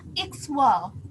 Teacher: Kalau dalam huruf kita membacanya bisa ikhawal, tetapi pada fonem pelesatan terjadi sehingga KH itu berubah menjadi X sehingga bunyi bahasanya menjadi ikhwal begitu